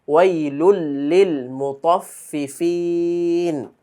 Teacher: তানবিনের পরে লাম, ইদগাম গুন্না ছাড়া। ওয়াইলুল লিল মুতাফফিফিন, দুইটা ফা একসাথে।